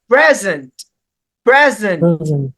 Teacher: The letter E has the schwa sound that occurs after the fricative, after the S consonant. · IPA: /ə/